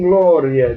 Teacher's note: ditongo crescente, ia, semivogal mais vogal